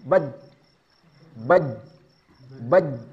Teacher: dari segi suara, dia bersifat syiddah, artinya kuat tekanannya. Taunya dia kuat ketika dia sukun.